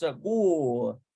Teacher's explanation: But in Hebrew, it's segul. You barely hear the R sound.